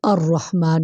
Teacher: اس کو تکرار بھی کہہ سکتے ہیں، بار بار ہونا، یہ صفت اس کی را میں پائی جاتی ہے